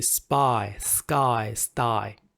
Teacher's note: will become you know you know unaspirated that's the term so there's no much air coming out